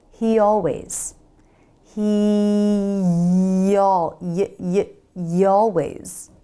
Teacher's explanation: it helps to put a Y sound in between the words